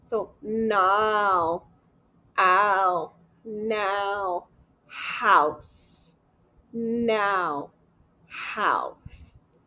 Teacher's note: So we have the ow. So we have it starts with ah and ends with o